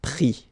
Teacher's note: you don't pronounce the final S